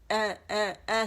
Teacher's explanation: اس کا مخرج الجوف نہیں ہے حمزہ کا, اس کا کیا ہے, اقص الحلق ہے, تو ہم نے وہاں سے ادا کرنا ہے.